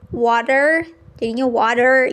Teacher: the T in the middle itu sering terdengarnya seperti D